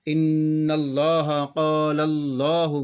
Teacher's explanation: لفظ اللہ کے لام سے پہلے پیش اور زبر ہے تو موٹا پڑھیں گے اور زیر باریک پڑھیں گے، اور ملاتے وقت سختی سے ملائیں گے، موٹا پڑھیں گے اس کو، اور زیر ہے تو اس کو باریک پڑھیں گے۔